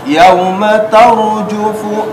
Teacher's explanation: Yauma waw huruf vokal u, yau yauma tar ra sukun sebelumnya fathah, maka ra di sini menjadi tafkhim tebal